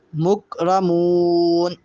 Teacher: مک کاف پہ کلکلہ نہیں ہوتا، قوف پہ ہوتا ہے، تو یہاں کلکلہ نہ ہو، کلکلے کی آواز پیدا نہ ہو. مکرمون کہا وہ غلط ہوگا، مکرمون.